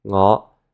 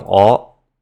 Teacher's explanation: Another sound shift that happens is that words that start with an ng sound will drop that sound so that it starts with a vowel instead